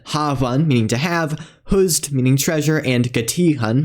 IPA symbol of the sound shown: h